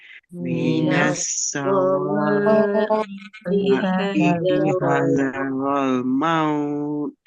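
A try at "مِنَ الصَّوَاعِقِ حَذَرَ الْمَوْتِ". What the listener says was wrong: Okey, sod ni tadi jangan baca sa ya, so. Minas sawa'iqi pedas, ada bunyi tak cukup pedas tadi.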